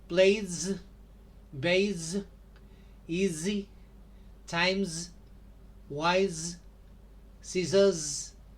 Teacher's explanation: Now, like Z, in this case, this S is a kind of buzzing S like the sound that is done by a mosquito buzzing, right? Z.